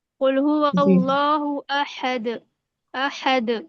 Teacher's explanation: दोहरी आवाज आएगी दाल पर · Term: कलकला